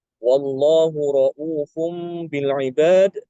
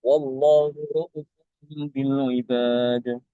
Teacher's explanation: Setiap kata ra'ufun di dalam Al-Quran, ini bacaan Imam Al-Kisai itu dengan membuang wawu. Ya, wawunya dibuang. Jadi hamzanya dibaca pendek.